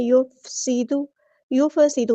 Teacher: سین میں سیٹی واضح کریں گے